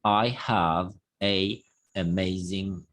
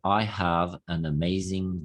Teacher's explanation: vean que no hay ninguna ninguna pausa no tengo que marcar Una pausa entre ambas palabras